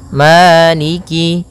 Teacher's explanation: Pada bacaan maliki di lafal ma ada hukum tajwid berupa mad tabi'i, yaitu adanya fathah bertemu dengan alif, panjangnya 2 harokat, maliki. Kemudian kaf di sini ada huruf kasrahnya, maka sempurnakan kafnya, jangan seakan-akan diputus.